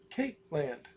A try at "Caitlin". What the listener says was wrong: It's Caitlin. Caitlin. Caitlin. There's not a space. It's one word.